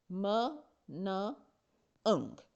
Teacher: So air flows through the nose rather than the mouth, और इसीलिए ये जो साउंड्स हैं इनको एक डिस्टिंक्टिव सी नेज़ल क्वालिटी मिल जाती है, और इसीलिए ये साउंड्स नेज़ल साउंड्स कहलाती हैं।